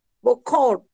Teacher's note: tiene la segunda O nasal